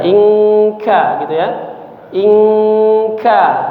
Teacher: Huruf kaf itu di pangkal lidah.